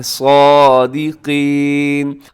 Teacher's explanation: اس میں صاد موٹا ہے، آگے جو قاف ہے اسے بھی اپنے موٹا پڑھنا ہے